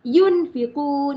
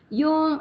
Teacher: Sembunyikan bunyi nun di dalam huruf fa. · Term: ikhfa hakiki